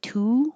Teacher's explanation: when I say to my lips are rounded